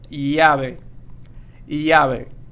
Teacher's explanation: Llave, and it's not going to be lave. As well, we have the V, so we're going to make sure that we pronounce this as B, so as in B and not V as you would pronounce it in English